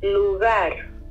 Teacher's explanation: The voiced velar plosive has been aspirantized into the voiced velar fricative, this symbol.